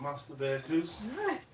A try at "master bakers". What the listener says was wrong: You said bakers. They do, but they usually say with a gap between the master and the baker bit.